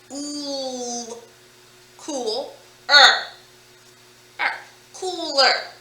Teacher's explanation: The vowel sound in the first syllable is ooh.